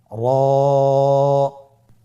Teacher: র হরফটি এখানে আমরা পোর করে উচ্চারণ করব, মোটা করে উচ্চারণ করব এবং র হরফটি এক আলিফ টেনে পড়ব। · জিহ্বার আগার উল্টা পিঠ তার বরাবর উপরে তালুর সঙ্গে লাগিয়ে উচ্চারিত হয়।